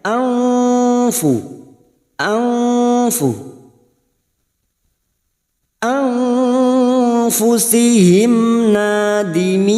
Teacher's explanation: Fi nun sukun bertemu fa ikfa hakiki. Kita samarkan bunyi nun sukun dan mendengung selama 2 atau 3 harakat. Pada saat menyamarkan dan mendengung kita siap membunyikan huruf fa, maka bunyinya anfu, anfu, anfusihim nadimin.